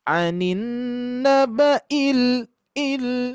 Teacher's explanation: Il berarti agak turun. Jadi penekanannya ilnya itu agak turun sedikit.